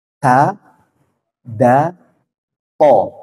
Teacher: ujung lidah bertemu dengan pangkal gigi seri atas